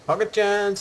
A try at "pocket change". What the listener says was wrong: Pocket change, you mean? Chance, not change.